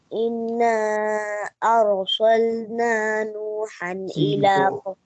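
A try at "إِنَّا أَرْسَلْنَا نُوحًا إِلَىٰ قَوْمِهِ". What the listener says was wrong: سین کو کلیئر کرنا ہے.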